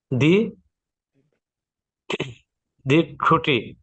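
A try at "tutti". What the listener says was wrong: তুতি, দি টুটি না, তুতি, এখানে তর উচ্চারণ করবে, শব্দ টি না, তুতি।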